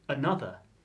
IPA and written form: əˈnʌðə (Another)